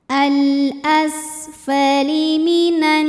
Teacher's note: Sinnya dialirkan, suaranya dialirkan nafasnya, dan ini punya ciri khas sifat yang tidak memiliki lawan, namanya sofir. Sofir itu artinya ada desis seperti suara ular.